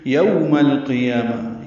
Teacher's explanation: یو ہونٹوں کو آگے لانا ہے، گول کرنا ہے